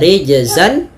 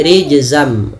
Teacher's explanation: Awalnya rijzan, ketemu mim menjadi rijzam, nunnya diganti dengan mim. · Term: idgham bi gunnah